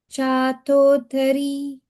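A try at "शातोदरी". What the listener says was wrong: This da is normal. Shatodari. So no mahapranas here.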